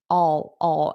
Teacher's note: notice that dark L sound for I will.